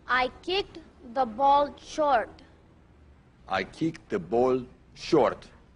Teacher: the tendency is to close down on this vowel so it comes out more like o or uh instead of a well-defined aw hold it